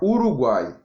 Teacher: Tritongo, nós iremos ter um menor, um maior e um menor na mesma sílaba